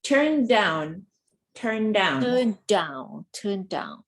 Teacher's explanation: the D blends with the other D